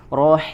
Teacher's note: Jelaskan hi, kasrohnya lebih dijelaskan, tarik rahangnya.